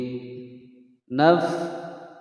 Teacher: fa berharokat sukun di naf, naf ada desisan angin